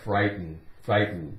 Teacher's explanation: We don't really make much of a sound with that T. It's more like frighten, frighten.